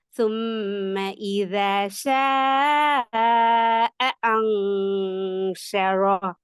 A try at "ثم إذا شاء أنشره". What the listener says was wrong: போதாது, ஏட உச்சரிப்பும் போதாது. ثم إذا شاء أنشره. ஜாயின் ஆகணும். நீங்க அந்த இடத்துல ராகம் எடுக்கணும். உங்களோட டோன் இதானே.